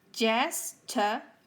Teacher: They are 3 syllables and the first one is the stressed one, like holiday.